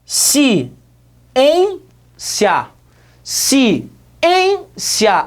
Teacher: a segunda sílaba é que a mais forte trata-se portanto de uma palavra paroxítona